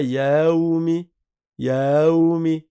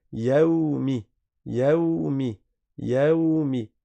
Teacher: Il n'y a pas de prolongation de alif après le ya.